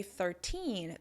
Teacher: If you notice when I say 13, the stress is on the second syllable, on the teen